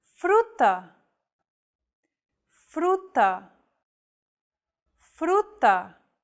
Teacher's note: this Trill sound is done by lightly tapping the gum Ridge behind your upper teeth with the tip of your tongue · It should be a quick, striking motion, similar to the sensation you get when pronouncing the T in words like butter, cutter, and so on. Don't roll your tongue like an English R. Most of the air should go around the sides of your tongue.